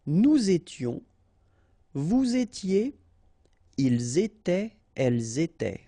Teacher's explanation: Same rule here, final S not pronounced, and then you make the liaison